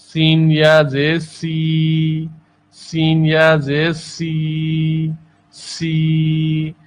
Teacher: سین میں بھی ایک سیٹی کی آواز ہوتی ہے. سین بھی سیٹی والے حروف میں سے ہے.